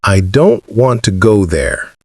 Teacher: Notice that the important words, don't and go, are stressed or said strongly. The smaller words, like I, to, and there, are said more softly or quickly.